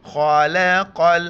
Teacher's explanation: خا کو بھی موٹا کر کے پڑھیں گے، بڑے قاف موٹا کر کے پڑھیں گے